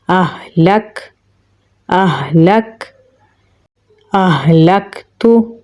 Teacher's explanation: काफ में सिफ्त शिद्दत और हम्स दोनों पाई जाती हैं, तो पहले हम सख्ती से पढ़ेंगे फिर सांस जारी करेंगे